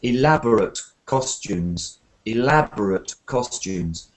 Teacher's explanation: Okay, well, we're just looking at this word, and what I'm saying is here it's an adjective, so the stress is at the beginning. So we have a kind of ut sound at the end.